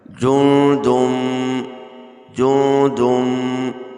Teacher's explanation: جیم نون پیش جن، دال میم دو پیش دم، جن دم، تنوین کے بعد حروف یرملون میں سے میم آ رہا ہے، لہذا ادغام یرملون ہوگا، یعنی غنہ کر کے پڑھیں گے